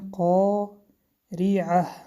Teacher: حرف را با کسره باریک خوانده می شود